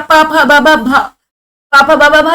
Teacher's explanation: त प फ भ, देखिए प वर्ग तो पूरा ओष्ठ्य है, प फ ब भ भ, पापा बाबा भा जब आप बोलेंगे बिना होठ टच किए नहीं बोल सकते आप, आपको अपर लिप और लोअर लिप टच करना पड़ेगा प, तभी तो आप बोल पाएंगे।